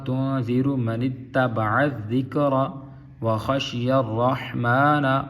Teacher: رحمن ہا کو ظاہر کریں گے، را کو پر پڑھیں گے۔